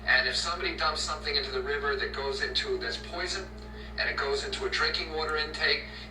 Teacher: RFK Jr.'s gravelly speaking voice is caused by a rare neurological condition he developed in his early 40s called spasmodic dysphonia, which causes the muscles that open and close the vocal cords to spasm involuntarily.